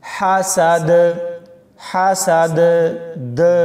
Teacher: جب ہم وقف کریں گے تو دال کے اوپر جو زبر ہے وہ سکون یعنی جزم میں بدل جائے گی، اور تب ہم یہاں پر کلکلا کریں گے